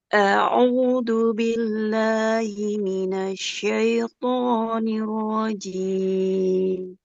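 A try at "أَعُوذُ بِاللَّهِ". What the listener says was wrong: Jangan a'udzubillah, tapi a'udzubillah. Zazizu. Huruf zalnya Ibu ya.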